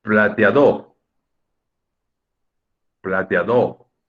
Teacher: O sea, sí o sí es en la A. La A solita, esa letra solita es la sílaba tónica.